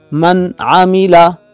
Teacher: اس میں نون کو ظاہر کر کے پڑھیں گے، اس پر غنہ نہیں ہوگا